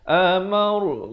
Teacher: Amar, ra dibaca tebal di sini.